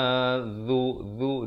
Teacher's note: Zu di hujung lidah.